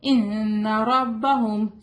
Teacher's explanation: یہاں پر نون پر غنہ ہوگا. رو ہیوی ہوگا